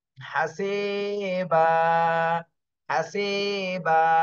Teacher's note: এখানে ওয়াকফ করলে আর বান পড়া যাবে না, হাসিবা, এক আলিফ টান দিতে হবে।